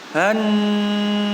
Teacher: Di sini ada nun yang bertasdid. Nun yang bertasdid dan mim yang bertasdid dibaca dengung yang lama. Dengung yang lama setara dengan panjang 2 ayunan.